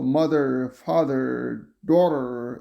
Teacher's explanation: And rhotic /r/ is clearly heard in all positions, so mother, father, daughter would be just clearly pronounced,